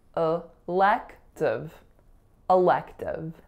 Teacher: in elective there are three syllables the first and last are both schwa and then the middle syllable is the winner